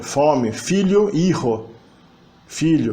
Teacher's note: o sumiço do F inicial, que vira um som de H inicialmente e depois desaparece. Esse H deixa de ser pronunciado e vira realmente uma consoante que sobrevive apenas na ortografia.